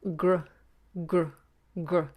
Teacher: You have the tongue, the back of the tongue up for the g, and then you're flipping forward to the R.